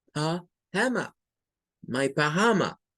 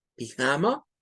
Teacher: Son dos pronunciaciones válidas, una con schwa y otra sin schwa.